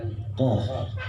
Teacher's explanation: Qaf itu makharijul huruf, tempat keluarnya huruf, berada pada pangkal lidah, seperti huruf qaf. Ya, huruf qaf itu ditekan pada ke langit-langit.